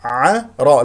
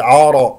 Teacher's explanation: النون المظهره من عرفات هكذا عين مرققه مستفه من وسط الحلق والراء هنا مفخمه لانها مفتوحه